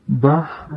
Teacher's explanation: ہا کی آواز درمیان حلق سے رگڑ کھا کر نکلتی ہے جیسے بحر ہا کی آواز ہائے کی ہا کی طرح ہوتی